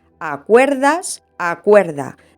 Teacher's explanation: al ser tónicas diptongan y se convierten en ue